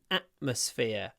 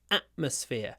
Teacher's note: I don't pronounce the T in atmosphere. I use a glottal stop.